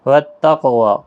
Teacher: قاف ساکن پر قلقلہ ہوگا، واو کے اوپر کھڑی زبر ہے، ایک الف کی مقدار کے برابر کھینچ کر وقف بھی کریں گے، اور ملانے کی صورت میں بھی پڑھیں گے ایک الف کے برابر کھینچ کر۔